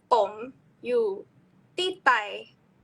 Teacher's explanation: instead of ti tai with aspiration, there's no aspiration at all